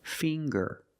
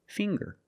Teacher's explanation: We see the nasal sound, plus the hard G, the G. Ger.